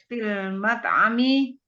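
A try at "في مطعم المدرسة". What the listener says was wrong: fi nggak ada fil. Bukan fil.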